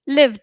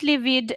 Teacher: we make it d not id